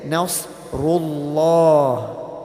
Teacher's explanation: So the letter before the word Allah, if this letter has a fatha, which you might know as a zabr, or a dhamma, which you might know as a pesh, okay? Then the word Allah is read with a heavy mouth